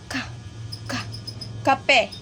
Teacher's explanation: Yung tunog na K galing sa likod ng bibig. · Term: velar sounds